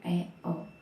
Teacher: vokal semi tertutup yang dibentuk dengan lidah diangkat 2/3 menutup mulut. Vokalnya yaitu E, O.